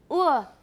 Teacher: uh is a mid high back vowel